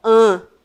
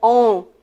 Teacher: são vogais que são pronunciadas em parte pelo nariz e em parte pela nossa boca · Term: vogais nasais